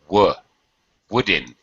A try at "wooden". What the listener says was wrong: Don't forget the D. Wooden.